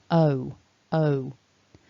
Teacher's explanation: you need to do is have some movement in your mouth we've got two positions because this is a double vowel o o so you should feel a rounding a movement